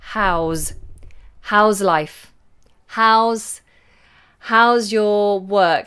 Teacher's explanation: And the S becomes like a Z.